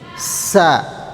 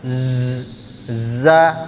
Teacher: Jadi kalau agak keluar sedikit nafas jadinya huruf sin sa. Kalau ditahan nafasnya jadinya z gitu ya.